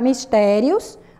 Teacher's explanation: Porque a sílaba mais forte da palavra mistérios é o té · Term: paroxítona